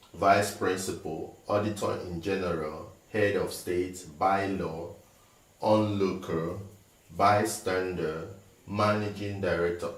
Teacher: All these words are noun and they are compound words. So the stress is put on the first syllable. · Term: noun compound words